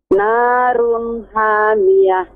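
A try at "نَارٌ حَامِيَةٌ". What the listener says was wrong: Masih ha, lebih ditekan ya ke tengah tenggorokan. Ada ha yang di tengah tenggorokan, benar-benar ditekan sih. Narun ha hai hu ya. Ya, lebih tajam, lebih terasa.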